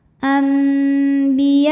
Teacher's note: Madnya adalah alif didahului fathah, kemudian hamzahnya a, satu kata yaitu pada kata anbiya'a. Maka ya-nya dipanjangkan boleh 4 boleh 5 harokat. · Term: mad wajib muttasil